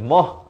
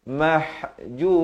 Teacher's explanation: Mim beri fathah bertemu ha di pertengahan kerongkong. Mah, bukan moh, tapi yang sebetulnya mahjura.